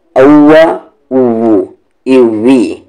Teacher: lips round होनी चाहिए वाव में